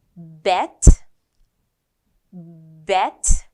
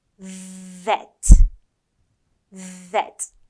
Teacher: The B sound, it's like a little explosion.